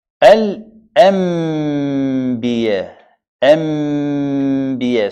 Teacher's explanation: To turn the نون الساكنة a letter ميم. So نون becomes ميم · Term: إقلاب